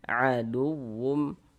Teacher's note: kita tekan sehingga intonasi suara kita itu sedikit lebih tinggi dibandingkan huruf-huruf di sampingnya